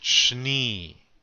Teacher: Make that sh run into the n sound